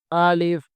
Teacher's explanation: الف منہ کے خالی حصے سے ادا ہوتا ہے۔ ایک الف کی مقدار عام حالت میں کھلی انگلی کو بند کرنے یا بند انگلی کو کھولنے کے برابر ہوتا ہے۔